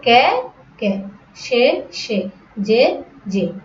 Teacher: একাক্ষর সর্বনাম পদের এ এর উচ্চারণ সম্বৃত বা এ এর মতো হয় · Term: সম্বৃত উচ্চারণ